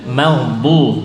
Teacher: Meldu dot makhrajnya tepi lidah ya.